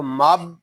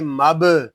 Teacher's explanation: میم با زبر مب، یہاں دونوں الف جو ہیں یہ نہیں پڑھے جا رہے، ہم میم کو با کے ساتھ ملا دیں گے، با ساکن ہے، اس میں خوب کلکلہ ظاہر ہوگا